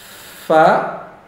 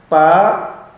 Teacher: dua gigi seri atas bertemu dengan perut bibir bawah